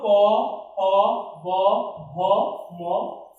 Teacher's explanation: উচ্চারণ করতে ঠোঁট মিলাতে হয়, ঠোঁট বা ওষ্ঠ। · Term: ওষ্ঠধ্বনি